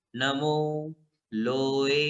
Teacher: लोए में ए जो है वो दीर्घ है, लो भी दीर्घ है, ए भी दीर्घ है, ए ह्रस्व नहीं होता है।